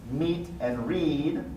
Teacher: we've seen the tense vowels are pronounced long